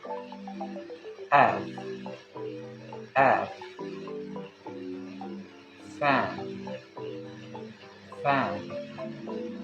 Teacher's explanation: The sound F is voiceless labiodental fricative. It is produced by placing upper teeth on the lower lip, pushing air to the narrow gap.